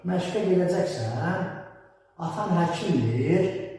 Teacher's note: sonuncu hecadakı sait müəyyən qədər adi normaldakından uzadılır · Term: sual intonasiyası